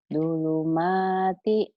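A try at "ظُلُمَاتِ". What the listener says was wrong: Zo. Zulumati. Zo. Zulumati. Jangan do tapi zo agar dong. Iya, zulumati.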